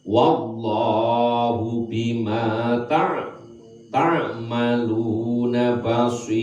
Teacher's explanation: lam yang ada pada lafaz Allah jatuh setelah harokat fathah harus baca tebal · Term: lam jalalah